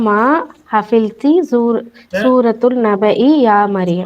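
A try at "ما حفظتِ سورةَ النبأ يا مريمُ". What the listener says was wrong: சூரத்துமா சூரத்தை அங்கேயே ஃபதா தான் போட்டிருக்கு.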